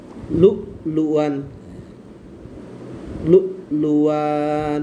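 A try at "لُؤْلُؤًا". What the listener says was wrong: না টান টুন নাই, লু লু আন, লু লু লু আন, এটা লু হবে আর এটা শুধু লু হবে, না টান টুন নাই, লু লু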